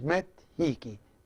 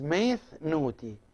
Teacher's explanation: it is either met with a taf, with a t sound, or meth with a thigh, with a theta. So here, when the word itself starts with ni, the n sound, and some other sounds, we use the th here instead of the t.